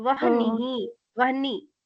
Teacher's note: By teeth and lips, we should pronounce va.